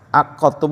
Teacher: kalau da itu enggak boleh dibaca qalqalah ya karena dilebur ke ta ya